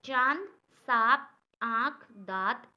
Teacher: अनुनासिक, ये स्वर होता है हमारा, इसका उच्चारण मुंह और नाक दोनों से किया जाता है